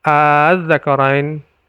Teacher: Jadi ada a panjang ya. Itu mad badal, a itu panjang. Kalau a tidak panjang itu bukan mad badal, tapi kalau a panjang dipanjang kemudian bertemu dengan tasydid, maka dia dibaca sebagai mad farku dan bacanya 6 harokat.